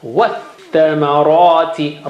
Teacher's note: you don't read alif because tha is asking for help, and you don't read lam because lam has no sign